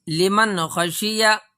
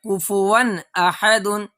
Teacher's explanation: نون کی آواز کو ظاہر کر کے بلا غنہ کے جلد پڑھیں گے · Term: اظہار